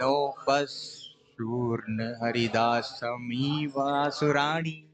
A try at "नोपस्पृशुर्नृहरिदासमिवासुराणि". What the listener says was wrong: नोपस, देखिए नो और पा पूरा है, नोपस्पृ, नोपस्पृशु ऐसे बोलना पड़ेगा, नोपस्पृशुर, नोपस्पृशुर्नृहरिदासमिवासुराणि।